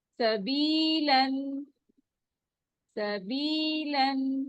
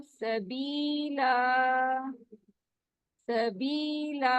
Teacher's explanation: और अगर स्टॉप करेंगे तो एक जबर ड्रॉप हो जाएगी और अलिफ मद बन जाएगा